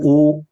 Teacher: उ के उच्चारण में हमारे होठों के पास से मुख विवर सकरा होता है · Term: संवृत